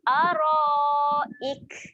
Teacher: Kaf mati sifat dia kena keluar angin.